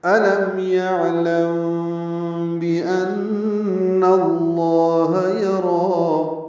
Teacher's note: میم ساکن کے بعد با آنے کی وجہ سے اخفاء شفوی ہے